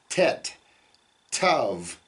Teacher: in English we would pronounce that with a very a hard T where you put your tongue at the back of your teeth tet t but in Hebrew it's a softer uh on both